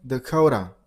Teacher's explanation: the last T turns into a little bit D sound.